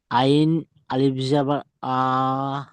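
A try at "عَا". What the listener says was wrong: হচ্ছে না, আপনার দম ছেড়ে যাচ্ছে। আপনার হচ্ছে না, বারবার বলছি, আইন আলিফ জার আ বললে হবে না।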